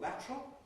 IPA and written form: ˈlætrəl (lateral)